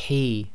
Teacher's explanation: the heavy ha which comes from the throat so you have to Exhale a bit more forcefully then we have slight grinding in the throat there d the